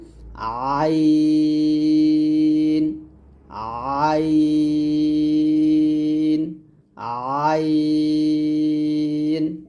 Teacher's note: আইনটা অবশ্যই হলকের মাঝখান দিয়ে বলতে হবে চাপ দিয়ে,